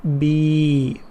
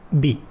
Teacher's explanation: the first one, be, prolonged, but the second one has only kasra, so it's be, not prolonged.